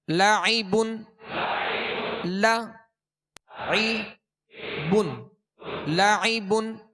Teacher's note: عين میں حمزہ کی آواز پیدا نہ ہو